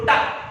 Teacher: जीभ ऊपर की ओर मुड़ती है, इसलिए इनको मूर्धन्य व्यंजन कहते हैं, अर्थात मूर्धा व्यंजन।